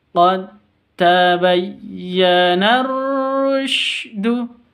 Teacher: Alif lamnya hilang, langsung masuk ke ra tasydidnya. Kenapa? Karena asy-syamsiyah.